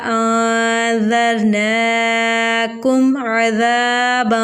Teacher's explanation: میم ساکن کے بعد عین آ رہا ہے تو یہاں پر اظہار شفوی کا قاعدہ ہوگا، یعنی ہم غنہ نہیں کریں گے